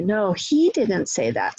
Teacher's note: So I'm emphasizing he, a pronoun, which is not typical, but I'm doing that for contrastive stress.